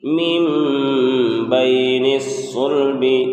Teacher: اقلاب کا مطلب ہوتا ہے بدلنا، تو نون ساکن کو میم سے بدل کر غنہ اور اقفا کے ساتھ پڑھیں گے